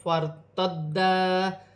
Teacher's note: را ساکن سے پہلے زبر ہے, را موٹی پڑی جائے گی. فارتدا الف سے پہلے زبر ہے, الف مدہ بھی بن رہی ہے, اور دال مشدد ہے, جماؤں کے ساتھ ادا کیا جائے گا.